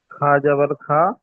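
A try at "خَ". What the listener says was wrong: খা নয়, খ। খ জাবার খ। খসি। খ টান হয়ে যাচ্ছে। খসি। শি টান হয়ে যাচ্ছে, সবগুলো হারাকাতে আছে, কোনোটা টান হবে না। হারাকাতের পড়াকে তাড়াতাড়ি পড়তে হবে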